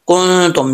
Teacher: کنتم، نون میں ساکن، نون ساکن کا اخفاء ہو رہا ہے، ایک الف کی مقدار لمبا غنہ کریں گے